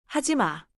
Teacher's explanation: 하지 마 with a short soft fall is the natural gentle command.